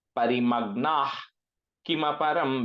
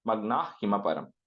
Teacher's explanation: That Visarga, you have to replace it with like the H sound. Parimagnah Kimaparam, because Ka is coming, right?